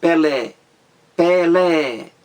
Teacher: Palavra oxítona é aquela em que a sílaba mais forte é a última da palavra